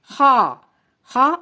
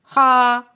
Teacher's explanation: خا کو ادا کرتے وقت ہونٹوں کو گول نہیں کرنا بلکہ منہ کو سیدھا کھولنا ہے۔ خا موٹے حروف میں سے ہے تو اس کا الف بھی پر پڑھا جائے گا۔